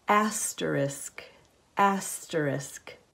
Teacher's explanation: There is no letter X at the end of the word. The two letters, S and K, make the sound sk, not x. The word is pronounced asterisk, not asterisk.